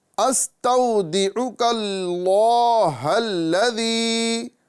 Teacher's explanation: استودعک اللہ الذی، یہاں پر واو لین ہو رہا ہے، لہذا واو لین کو جلدی ادا کریں گے